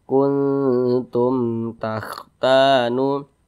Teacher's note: hukumnya izhar syafawi, dibaca jelas, tidak berdengung. Dibaca pendek saja.